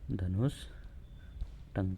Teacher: के स्थान पर परिवर्तन नहीं होता अगला उदाहरण है धनु टंक विसर्ग के बाद ट आ रहा है तो विसर्ग के स्थान पर कौन सा स होगा अब मूर्धन्य स होगा